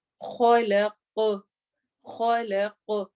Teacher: قاف میں آخر میں ایکو ساؤنڈ ہوگی، کلکلا ہوگا ، من خا کو موٹا کرنا ہے، اور قاف کو بھی،